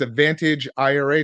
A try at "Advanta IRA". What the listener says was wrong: It's Advanta, yeah. No GE, but yeah, Advanta IRA.